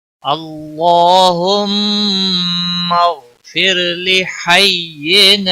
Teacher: را ساکن سے پہلے زیر ہے، را کو باریک پڑھیں گے